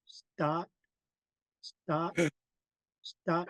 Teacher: That T is being snapped out.